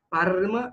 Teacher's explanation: o R, ele é sempre, sempre rolado, assim, tipo Parma, não Parma e não Parma, é sempre Parma.